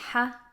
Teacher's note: the back of the tongue and the middle of the tongue are both lowered which produces a light sound